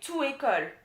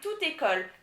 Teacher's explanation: school every school good j so you have to say tutiko the t which is the consonant at the end of the first word links up with the vowel on the second word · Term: link up